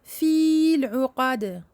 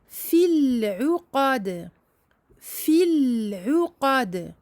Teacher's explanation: Nous n'allons pas dire fil uqad, non. La prolongation i ici disparaît. Nous ne lisons que la kasra.